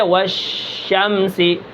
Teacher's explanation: اب شین کو دیکھیں، شین کے اندر حمز ہوتی ہے، یعنی سانس جاری ہوتا ہے، آواز کے اندر پستی ہوتی ہے، جیسے والشمسی، آواز پست ہے، سانس جاری ہے۔